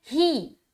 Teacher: حمزہ زیر کیا بولیں گے؟ ای بولیں گے، اے نہیں۔ ہا زیر کیا بولیں گے؟ ہی، ہے نہیں، ہے بولیں گے تو مجہول ہو جائے گا۔